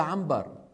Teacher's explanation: إذا جاءهم نون ساكنة وبعدها باء يقلبون النون إلى ميم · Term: القلب